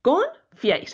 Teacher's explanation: esta palabra en sílabas con fiáis es una palabra bisílaba confiáis aquí hay un triptongo que está formado por una I cerrada una abierta y una I cerrada